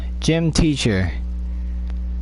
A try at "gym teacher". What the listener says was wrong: You said gem. You should have said gym, not gem.